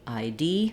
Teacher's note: In an abbreviation like ID, we stress on the last letter of the abbreviation.